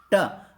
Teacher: आपकी जीभ जब आपके मुंह के पिछले हिस्से को टच करे और जीभ घूम जाए आपकी, तो उसको कहते हैं मूर्धन्य।